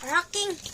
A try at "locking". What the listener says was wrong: Wrong. L na ha, L na.